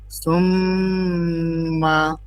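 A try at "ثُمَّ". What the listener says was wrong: সুম এটা জিহ্বা বের হবে, সা সুম্মা, বেশি বেশি 3 সেকেন্ড হয় না তো। সুম, এই যে দাঁতের এইখানে হালকা বের করলেও হয়, বলার সময় ভিতরে চলে যাবে। সুম, সুম, আমার জিহ্বা দেখা যায়, সুম্মা,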